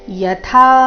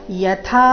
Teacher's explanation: ಯಥಾ ಥಾ ಮಹಾಪ್ರಾಣ ದೀರ್ಘ